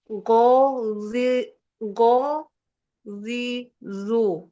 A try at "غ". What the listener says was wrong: Berubah ghainnya. Dari kasroh dan tomahnya jadi huruf zal. Jangan ghazizu Ibu ya. Ghazizu. Huruf ghain itu makrotnya di tenggorokan, bukan di lidah bagian depan.